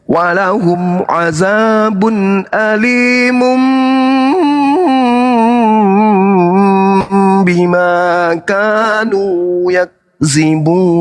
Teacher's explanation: tanwin yang adalah dammatain itu bertemu dengan huruf ba, dia iklab, jadinya didengungkan.